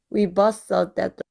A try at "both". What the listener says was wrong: we both saw 하면은 버처럼 또 느껴지기도 해요. We both saw 해서 both는 생각보다 진짜 발음하기 어려운데 요 th 부분에서 혀를 또 살짝 내밀어서 바람 소리가 좀 느껴져야 돼요. We both saw 이렇게요.